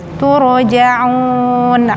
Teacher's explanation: Ro-nya tebal karena sebelum huruf ro huruf berbaris dhamma